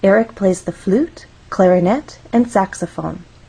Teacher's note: when we have a list we use rising intonation in each phrase until we get to the final item of the list